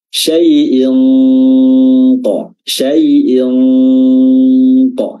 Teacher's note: Dan dia dibarengi dengan tentunya sifat gunnah dari huruf nun tetap ada, dan juga samar-samarnya itu cara menyamarkan tanwinnya adalah dengan meletakkan makhraj huruf qaf ketika pelafalan nun sukun. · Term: ikhfa haqiqi